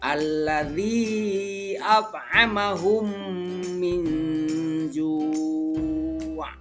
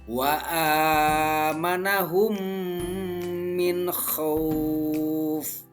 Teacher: Jadi apabila ada huruf mim bertemu dengan huruf mim lagi, terutama huruf mim mati bertemu dengan huruf mim, maka dibacanya itu dengan memasukkan huruf mim ke dalam huruf mim itu disertai dengan gunnah. Nah, sekitar 2 ketukan atau 2 harkat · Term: idgham mutamatsilain